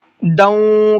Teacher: اندادوں کے اندر اخفا کا قاعدہ ہے، اس لیے یہاں پر تھوڑا سا ناک میں آواز روک کر کے پڑھنا ہے.